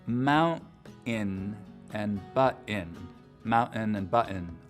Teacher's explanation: with just a pure glottal stop for that T sound in the middle of the word